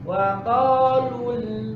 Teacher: habis lu itu harus ditarik. Kenapa? Biar lamnya menjadi tipis.